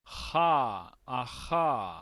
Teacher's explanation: Este nos indica que es el mismo sonido de la par porque se articula de la misma manera y está en la misma posición, pero es un sonido donde no vamos a vibrar, donde no vamos a hacer que nuestras cuerdas vocales resuenen. Simplemente vamos a dejar pasar el aire. Ja, ajá. Entonces, este sonido, si usted le pone atención, es casi como una H para nosotros.